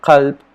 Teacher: the first sound which is a voiceless uvular stop